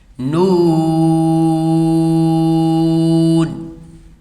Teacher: نون کو جب پڑھیں گے تو اس میں آواز جو ہے وہ ناک میں نہیں جائے گی